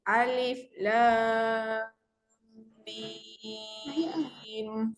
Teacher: Dekat antara lam dengan mim sebenarnya ada kadar dengung. · Alif tu dibaca dengan kadar 2 sebab dia tak ada tanda panjang. Manakala lam dibaca 6, mim dibaca 6.